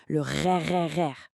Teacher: Et enfin, étape 3, soufflez doucement de l'air à travers ce petit passage. L'air va frotter entre le fond de votre langue et votre gorge et c'est ça qui va créer la vibration.